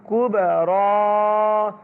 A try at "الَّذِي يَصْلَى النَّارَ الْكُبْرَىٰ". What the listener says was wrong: হ্যাঁ, আল্লাযী ইয়াসলান নারল কুবরা। বলেন, ভেঙে ভেঙে বলেন না।